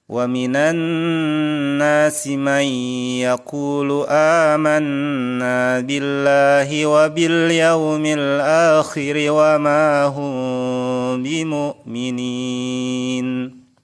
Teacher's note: bacaan mim mati yang kedua adalah Ikhfa Syafawi Ikhfa Syafawi adalah membunyikan mim mati dengan samar-samar di bibir disertai dengan dengung apabila bertemu dengan huruf ba